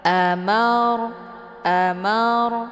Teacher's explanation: yang sebelumnya harakatnya fathah maka hukum bacaannya adalah tafim ataupun tebal Mar cara bacanya posisi pangkal lidah terangkat ke langit